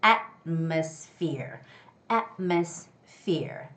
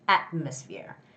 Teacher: The stress goes on the first syllable, so it's atmosphere.